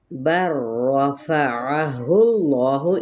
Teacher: بر رفعہ اللہ، ان حرکات کو لمبا نہیں کریں گے، اس میں جلالہ کا لام وہ ہے موٹا کر کے پڑھا جائے گا